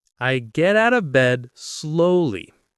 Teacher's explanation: The word slowly, with a stress on the first syllable, not slowly like some learners say.